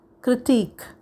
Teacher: This word has a stress on the second syllable plus the double E sound as in weak, critique.